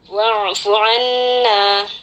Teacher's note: nun bertasdid, hukumnya gunnah musyaddadah, kita baca dengan kadar dengungan yang akmal hingga kurang lebih 3 harakat